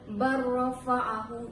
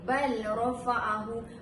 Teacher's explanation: Jadinya cara bacaannya yang tepat adalah barrafa'ahu dengan memasukkan huruf lam kepada huruf ra dan menjadikan huruf tersebut kepada tanda syaddah ataupun bertasydid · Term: idgham mutaqaribain